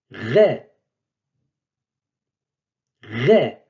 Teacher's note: C'est le R du français, ce qu'on appelle le R grasseyé du français.